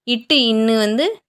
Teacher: நாவின் நுனி அன்னத்தின் நுனியை பொருந்துவதால் பிறக்கின்றன